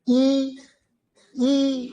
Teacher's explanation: मुंह पिचक रहा है। है ना? कम खुल रहा है। बहुत कम खुल रहा है।